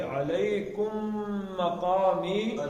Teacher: اب یہ کم کی میم اور مقامی یہ آپس میں ملا کے پڑھیں گے